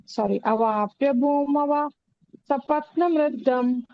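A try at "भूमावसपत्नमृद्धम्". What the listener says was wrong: ಭೂಮಾವ ಸಪತ್ನ ವೃದ್ಧಂ. ಭೂಮಾವ ದೀರ್ಘ ಬರಲಿ.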